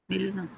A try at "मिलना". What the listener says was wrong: मिलना नहीं, मिलना। ला में आ है।